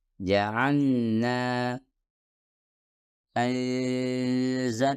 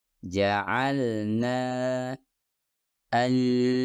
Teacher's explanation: Anda harus mengucapkannya secara jelas atau biasa disebut izhar sebelum melanjutkan ke huruf nun